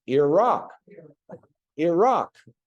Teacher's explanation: now put the accent the emphasis on the Rock